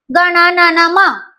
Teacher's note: या पाच व्यंजनांचा उच्चार नाकातून होतो म्हणून त्याला आपण अनुनासिक असे म्हणतो